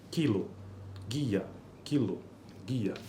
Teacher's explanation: seguidas de da vogal I por exemplo em kilo e guia a propriedade de ser anterior da vogal i é compartilhada pela consoante precedente k e g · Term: palatalização de consoantes velares